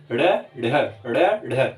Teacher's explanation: इनका जब आप उच्चारण सीखेंगे तो आप देखेंगे कि जीभ ऊपर उठ के तेजी से नीचे आती है। एक बार आपकी जीभ ऊपर उठेगी फिर तेजी से नीचे आके गिरेगी। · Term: उत्क्षिप्त व्यंजन